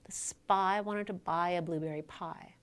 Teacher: the word pie is produced with a little puff of air as the p is released. That puff of air is called aspiration.